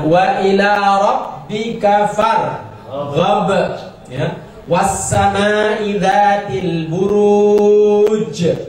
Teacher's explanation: Kemudian membunyikan terakhir huruf, baik dibaca secara langsung mati atau dipanjangkan, tapi diakhiri dengan bunyi memantul yang disebut dengan Qalqalah. Qalqalah itu artinya memantul.